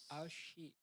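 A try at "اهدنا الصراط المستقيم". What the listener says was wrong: Nah, belum. Sok, ihdinas sirata. Nah, itu lebih mendekati yang barusan ya daripada shin tadi. Ihdina. Ya, masih butuh latihan, Pak ya. Ya, nanti insya Allah dilatih lagi huruf shadnya.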